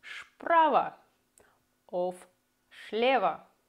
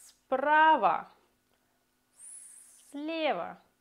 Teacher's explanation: Maar de S blijft als S in sap en wordt niet als sh in chocola. Als het moeilijk is om dit uit te spreken, probeer dan de s langer te maken.